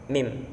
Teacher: makhrajnya dua perut bibir bagian tengah